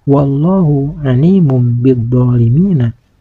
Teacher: Kalimat Allah ini harus dibaca tafhim yaitu dibaca tebal, karena kalimat Allah ini didahului oleh huruf yang berbaris fathah, yaitu huruf wawu.